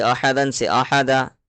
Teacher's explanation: 2 زبر پر وقف کرنا ہو تو ایک زبر کے ساتھ الف پڑھا جاتا ہے، جیسے احدن سے احدہ.